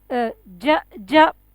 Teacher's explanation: Ja. Yeah, your middle part or tongue touches to the roof, middle side. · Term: makhraj of Jim